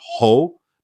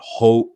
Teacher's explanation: the pronunciation here is not ho, but ho with a longer sound